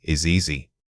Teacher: This is a soft, continuous linkage. The buzzing sound at the end of is vibrates right into the next word. Focus on maintaining that consistent, gentle vibration.